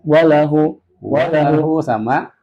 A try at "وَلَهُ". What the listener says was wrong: Walahu itu lambat. Maksudnya ini beda kok bacaan yang harusnya nggak digas ke digas gitu. Jadi nggak ada ngaji itu sebenarnya digas-gas kayak tadi.